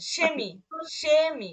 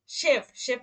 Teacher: যখন শব্দের শুরুতে থাকবে তখন তার উচ্চারণ হবে তালবীয় শ